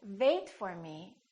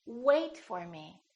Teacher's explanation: if you don't round your lips it's probably going to sound like a V sound